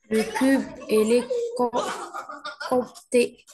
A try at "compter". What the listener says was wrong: Le P, ça se prononce pas. Et les compter. Il faut juste faire un peu d'exercice et faire attention aux lettres qui ne se prononcent pas dans les mots, qui mal ENT.